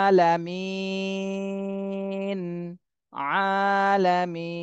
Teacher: এর আগে মাদের হরফ চলে আসছে জেরের বামে জজমালা ইয়া এজন্য এখানে আর এক আলিফ থাকবে না এখানে তিন আলিফ টান দিতে হবে